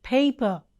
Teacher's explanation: pur produces two sounds in the initial position as in paper aspirated per is uttered with more force giving out a puff of air as i said puff of air extra breath force okay we